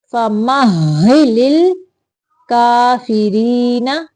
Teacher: یہاں پہ ہا کے اوپر تھوڑی دیر رکنا ہے، شد ہے، ہا مشدد ہے